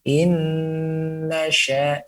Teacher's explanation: 50% difokuskan kepada lidah menempel gusi dan 50% difokuskan keluar daripada hidung ya. Jangan sampai hanya difokuskan kepada lidah saja.